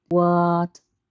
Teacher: Try it with the English word what. First tone, high and flat.